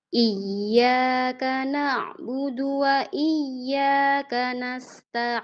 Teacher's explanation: Saat baca iyaka pertama i-nya tuh memanjang.